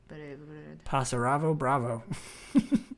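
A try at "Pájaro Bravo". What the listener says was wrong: Pasaro Bravo. You added 6 syllables. Pasaro Bravo.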